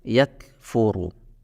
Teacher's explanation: huruf kaf adalah termasuk huruf yang keluar dari makhraj lidah atau lisan. Lebih tepatnya di aqsal lisan atau pangkal lidah. Lidah bagian belakang.